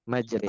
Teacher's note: imalah itu adalah memiringkan suara antara fathah dan kasroh. Berarti kalau sesuai ininya ya, sesuai bagannya, imalah itu terletak di tengah-tengah antara fathah dan kasroh.